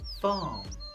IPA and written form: fɑːm (Farm)